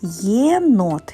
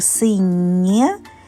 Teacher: в даному випадку є не буде позначати два звуки але лише один е